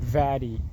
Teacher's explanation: lower lip is active and upper teeth are passive they do not move but they are fixed for example uh